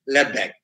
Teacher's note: In a word like left back, we say left back. The T again, that sound gets elided.